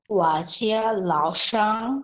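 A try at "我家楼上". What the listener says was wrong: লাও না, এটা লও বলে, লও।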